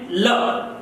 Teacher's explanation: यह वर्ण जब उच्चारित हो तो ये जीभ के पास में से होता हुआ सीधा मुंह से उच्चारित हो जाता है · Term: पार्श्विक